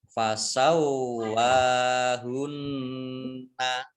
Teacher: Kemudian wawu fathah berdiri mat tabi'i, nun tasdid dibaca mendengung atau gunnah, ditahan 2 harokat